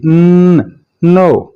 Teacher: आपकी जुबान की नोक ऊपर वाले दांतों के पीछे जाकर लगेगी और आवाज नेजल कैविटी में जाएगी।